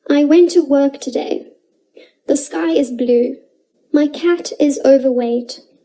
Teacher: intonation we use in english is falling intonation unlike rising intonation falling intonation is used to show certainty we use it at the end of a statement that we are sure about